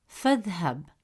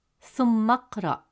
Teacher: Notice how the sound of alif is skipped, transitioning directly from the preceding sound to the next letter in the word, creating a smooth and natural flow. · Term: Hamzat al-Wasl